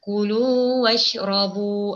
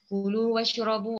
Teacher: Okey, lu pada bacaan pada kalimah lu, bacaannya hukumnya di sana terdapat adalah hukum mad asli. Jadi bacaan pada kalimah lu bunyinya perlu kita ni panjangkan sebanyak dua harokat.